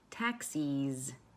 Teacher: Do you also notice that the E sound in taxis is longer?